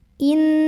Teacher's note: nun sukun yang bertemu dengan huruf nun, maka nun yang pertama dimasukkan ke nun kedua, idgham, sambil berdengung. Jadi di sini kita nahan bunyi an-nya. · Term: idgham bi gunnah